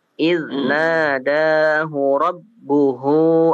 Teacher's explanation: Baik, untuk rabbuhu, hu-nya panjang ya. Yang hu yang kedua, hu yang kedua itu panjang. Yang pertama pendek.